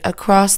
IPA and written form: əˈkrɒs (Across)